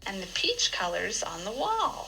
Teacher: There's a little bit of a pause at the end of peach colors. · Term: noun phrase